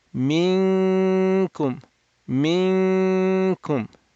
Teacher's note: While holding your tongue at calf, nasalize. Open the nasal cavity. 2 harakat nasal sound.